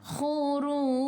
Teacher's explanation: Khu biar ada angin, biar menggelegak